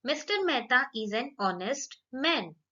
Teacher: When we pronounce these words, H is silent.